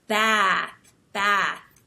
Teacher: smile and you have this wide mouth WID set mouth and you hold your tongue up high and when you talk you have a more nasal sound because American English tends to be a little bit more nasal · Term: short a sound